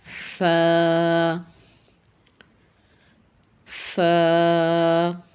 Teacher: ہمارے اوپر کے جو دو دانت ہیں سامنے والے، جب یہ نیچے والے ہونٹوں کے اندرونی حصے سے ٹچ ہوتے ہیں تو وہاں سے ادا ہوتا ہے ف، ف۔ اس طریقے سے اپنے اوپر والے دانتوں کو نیچے ہونٹ کے اندرونی حصے سے لگا کے ٹچ کر کے فا کو ادا کرنے کی پریکٹس کریں گے۔